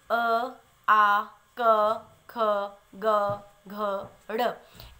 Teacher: इन सब को बोलने के लिए हम कंठ का उच्चारण करते हैं, यानी गले से ध्वनि निकलती है